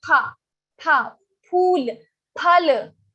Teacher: But in Sanskrit we have pha, phool, phal, not fa. We don't say phal, but phal. Our lips touch each other. So like pha, pa.